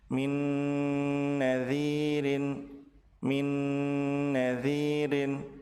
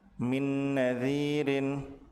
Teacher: Apabila nun sukun bertemu dengan nun, maka nun yang pertama dilebur ke nun yang kedua dengan cara ditahan dua harokat disertai dengan gunnah